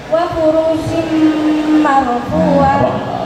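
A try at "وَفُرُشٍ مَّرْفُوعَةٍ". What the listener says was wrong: Ruhnya itu nggak dibaca panjang, ini dibaca pendek, bukan mat tobi, bukan. Ini bukan mat tobi tapi biasa. Wa furushim marfu'ah.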